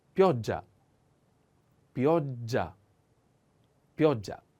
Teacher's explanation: The accent on O. And pay attention to this double consonant sound. Is a little strong.